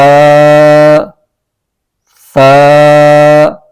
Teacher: زبان کا سرا اوپر کے دانتوں کے اندرونی کنارے سے لگا کر ہم پڑھیں گے اس حرف کو۔ اگر زبان کا سرا نہ لگا تو یہ حرف صحیح نہیں ادا ہوگا، سین کی آواز نکل جائے گی۔